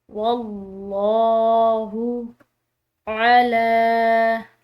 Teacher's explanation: लफ्ज़ अल्लाह की लाम पूरा अदा की है क्योंकि वाव की ज़बर आ रही है